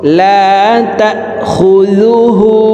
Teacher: হার উপরে উল্টা পেশ আছে, তাই ঠোঁট গোল করে এই হাকে এক আলিফ টেনে পড়ব।